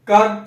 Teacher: देखिए कंठ पे आवाज रुकती है, उसके बाद सीधा बाहर, तो कंठ हो गया।